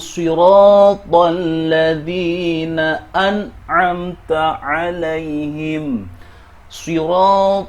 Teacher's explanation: 'Ro' ini panjangnya dua harakat karena merupakan thabi'i mad.